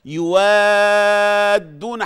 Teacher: وعشان تدي كمان، يوادون حقها اللي هو المد اللازم الكلمي المثقل